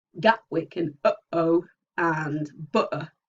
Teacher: there's the glottal allophone that we get in things like Gatwick and uh-oh and butter. Okay, so it's not actually a phoneme, but it is an allophone.